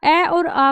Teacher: अ और आ का जो उच्चारण होगा वो कंठ से होगा।